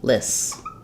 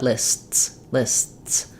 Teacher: the T does stop the air even though we don't hear a sound we hear a break between our two s sounds